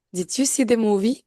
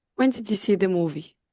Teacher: the first one is rising intonation and the second one has a falling intonation